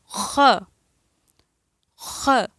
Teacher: حلق کا وہ حصہ جو کہ ہمارے منہ کے ساتھ ملا ہوا ہوتا ہے، یہاں سے ادا ہوگا